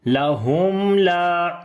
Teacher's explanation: تو میم کے اوپر آواز کو آدھا لمبا کرنا ہے، مکمل نہیں کرنا، جزئی طور پر اس کو لمبا کیا جاتا ہے۔ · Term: توسط